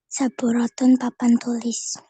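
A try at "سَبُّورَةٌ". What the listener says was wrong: Ingat bu-nya dipanjangin ya. Saburatun.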